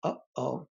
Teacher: you sort of stop at the word like oh oh right so you go oh oh there's a there's a pause and then a release so that is what we call check vowels so in english